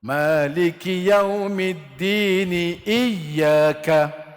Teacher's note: Sama ada kita sambung bacaan ataupun kita mulakan bacaan, hamzah tu hidup. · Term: hamzah qata'